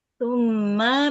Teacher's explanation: Ditahan dengungnya tiga harakat di rongga hidung merupakan gunah tingkat pertama gunah akmal. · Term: guna musyaddadah